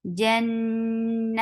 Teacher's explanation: Keep your tongue straight to make this ikhfa, because ta is among light letters. Taji, ta is very sharp, attached with jim.